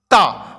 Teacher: ता तो आप यहां पर क्या चीज से बोल रहे हो दांत से बोल रहे हो